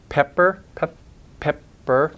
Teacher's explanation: It's just that they're the unaspirated kind, like the second P in pepper, pepper. The second P, it doesn't have that puff of air. It's a soft or unaspirated P.